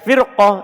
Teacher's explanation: Ini ro-nya dibaca tebal. Padahal dia terletak setelah kasro. Kasronya asli bersambung langsung dengannya.